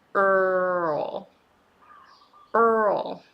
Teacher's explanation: it has a little schwa sound before you move on to L because it takes time to move your tongue from her position to L position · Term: dark L